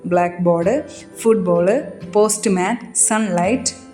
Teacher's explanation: ഈ കോമ്പൗണ്ട് വേർഡിൽ സാധാരണ ഫസ്റ്റ് പാർട്ടിലാണ് നമ്മൾ എന്ത് ചെയ്യാ സ്ട്രസ്സ് കൊടുക്കുന്നത് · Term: കോമപൗണ്ട് വേർഡ് സ്ട്രെസ്സ്